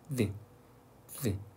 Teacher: 드인데 윗니와 아랫니 사이에 혀가 물려 있다가 안으로 들어가면서 안으로 넣으면서 나는 소리가 드야